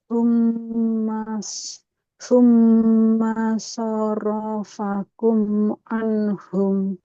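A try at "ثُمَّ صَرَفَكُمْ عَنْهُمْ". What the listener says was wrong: Mimnya jangan dipanjangkan.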